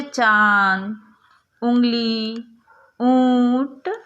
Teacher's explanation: यह भी चिन्ह के रूप में, जिसको हम चंद्र बिंदु भी उच्चारण में लाते हैं, प्रयोग होता है. इसके उच्चारण में मुख तथा नासिका दोनों से श्वास निकलता है. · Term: अनुनासिक